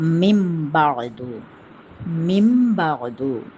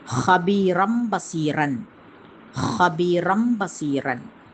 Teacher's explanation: சுகுன் பெற்ற நூன் அல்லது தன்வீனுக்கு பின்னாடி பா வரும்போது அந்த சுகுன் பெற்ற நூன் அல்லது தன்வீனுடைய நூனை வந்து மீமாக மாற்றி வருது. ஃபார் எக்ஸாம்பிள் சுகுன் பெற்ற நூன் பக்கத்தில் பா வரும்போது மிம்பாது மிம்பாது. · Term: இக்கிலாபு